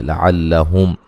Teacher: آخِرَهُ، را کو بھی موٹا ادا کریں گے، ہو مد اصلی ہے۔ لعلہم، میم ساکن کا یہاں اظہار ہوگا، غنہ نہیں کریں گے